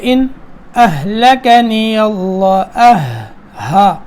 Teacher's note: آگے ان اہلکنی اللہ، ہا کی ادائیگی درست ہو، گلے کا آخری حصہ جو سینے کی طرف والا ہے وہاں سے ہا نکلتا ہے